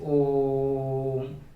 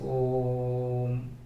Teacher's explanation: ओम का जब उच्चारण करना होता है तो इसको ज्यादा देर तक खींचते हैं, इसको ज्यादा देर तक एक्सपेंड करके बोलते हैं, जैसे ओम।